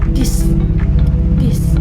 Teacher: Cara pengucapannya lidah di antara gigi bersuara